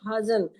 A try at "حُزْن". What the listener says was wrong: حزن ہوتا ہے، ہاں پہ پیش ہونا چاہیے.